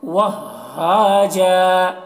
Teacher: اس ہا کی آواز حلق سے نکلتی ہے اور بغیر ہوا کی نکلتی اس کی آواز.